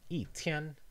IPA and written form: i˥˩ tʰjɛn˥ (one day)